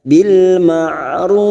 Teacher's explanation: Ma'ruf mat arid li sukun 4 harakat kita panjangkan.